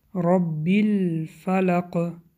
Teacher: الرا غوص خونده می شود به سبب فتحه